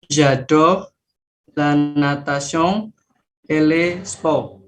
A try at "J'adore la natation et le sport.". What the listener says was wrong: C'est pas les. Tadi kita sudah sepakat L dan E bacanya apa? Le. Yang bacanya le yang ada S-nya ya tadi ya. Le ya. J'adore la natation et le sport.